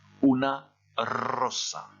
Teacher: le S, il n'y a pas de zozotement en espagnol pour le S